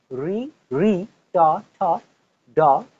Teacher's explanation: উচ্চারণ স্থান মূর্ধা এজন্য একে বলা হয় মূর্ধন্য বর্ণ